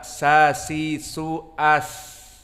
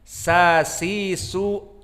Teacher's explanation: di mana disaat kita menyebutkannya dan mensukunkannya masih ada nafas maka dia termasuk dari huruf fulhams